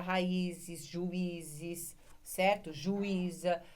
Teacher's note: Juíza, porque elas têm as mesmas características. O I ficou sozinho na sílaba tônica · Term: hiato